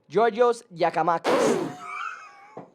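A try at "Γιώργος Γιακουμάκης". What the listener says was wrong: Yorgos Giacomakis. Yorgos. Yorgos Giacomakis. No, it's Yorgos. So when you put a G, a gamma, which is a letter in Greek, when you put the G at the beginning, it's ya.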